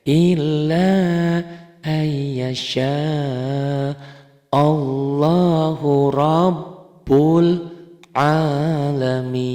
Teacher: Nih lapad Allahnya dibaca tebal karena sebelum lapad Allah baris di atas, ini baris patah.